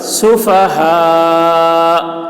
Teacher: کما آمن السفہاء، ہا میں مد ہے، کھینچیں گے. سفہاء، اور یہاں پر ٹھہر رہے ہیں تو حمزہ کی آواز ظاہر ہوگی ٹھہرتے وقت